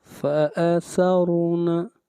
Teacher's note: را کو موٹا پڑھیں گے، اور را سے پہلے زبر ہے